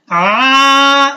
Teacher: आइन को आपने वस्ते अलग से निकालना है, दरमियानी गले का दरमियानी हिस्से से आ, ये आवाज आनी चाहिए